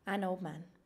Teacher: It's very difficult to pronounce all 3, so we need to omit one. Omit one sound when 3 consonants are found together. We then take away the D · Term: too many consonant rule